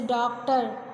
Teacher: आ और ओ ध्वनियों के बीच में है